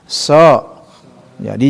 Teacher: Jadi kalau so itu memiliki sifat al-isti'la itu kan. Juga sifat itbak juga ada di situ.